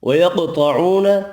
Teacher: وَيَقْطَعُونَ قاف حروف مستعلیہ طا حروف مستعلیہ دونوں پر پڑھیں گے. قاف ساکن پر قلقلہ بھی کرنا ہے. واو مدہ ایک الف کی مقدار میں کھینچ کر پڑھیں گے.